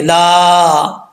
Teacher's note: لام کے آگے الف ہے، ایک الف کی مقدار، اس کو لمبا کریں گے